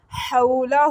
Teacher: ہاں کے اوپر الٹی پیش ہے، اس کو بھی 1 سیکنڈ کے لیے لمبا کر کے پڑھیں گے